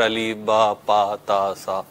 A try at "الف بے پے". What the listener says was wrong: الف با پا نہیں ہوتا، الف بے پے ہوتا ہے. الف بے پے تے.